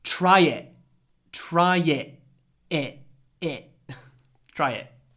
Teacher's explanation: that was another glottal stop I said try it